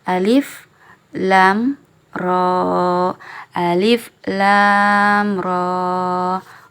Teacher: huruf r-nya dibaca panjang juga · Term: mad thabi'i Harfi